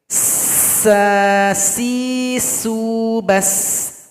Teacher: Sifat khusus pada huruf sin adalah sifat sofir, dia dibaca tajam.